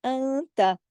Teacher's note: इधर इख्फा हो रहा है, नून साकिन के बाद ता आ रहा है